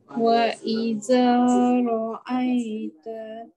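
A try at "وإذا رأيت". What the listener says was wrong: Tolong keluarkan lidah huruf zal. Wa idza ra'aita.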